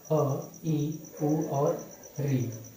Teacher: इसमें बहुत ही कम समय लग रहा है। एक मात्रा का समय लग रहा है। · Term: ह्रस्व स्वर